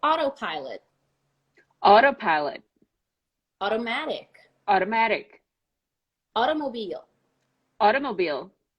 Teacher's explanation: The T becomes an R when you pronounce it more American style and a little faster.